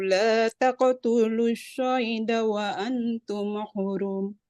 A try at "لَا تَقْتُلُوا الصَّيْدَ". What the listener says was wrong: Shadnya jangan kayak shin. Wa an as-sayda. La taqtulus sayda. Jangan asyayda. As-sayda. taqtulus soida. Kayak kita mau mengucapkan huruf sin, tapi ini yang versi tebalnya. Soida. Soida, jangan syoida. As-soida.